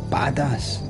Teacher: like the emphasis is on the bad bit